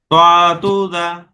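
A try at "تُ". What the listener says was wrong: হ্যাঁ, দদু না, ততু জ।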